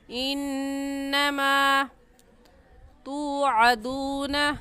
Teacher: انما میں نون مشدد ہے اور نون مشدد پر ہمیشہ غنہ ہوتا ہے، غنہ کر کے پڑھیں گے.